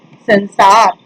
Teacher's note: अनुस्वार को नासिक्य ध्वनि भी कहते हैं। इसका उच्चारण करते समय हवा केवल नाक से निकलती है और उच्चारण कुछ जोर से किया जाता है।